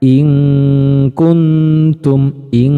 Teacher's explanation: Jadi ikhfa yang posisi makhrajnya jauh dari nun, makanya cenderung bunyinya ang. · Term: ikhfa ab'ad